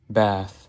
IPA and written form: bæθ (bath)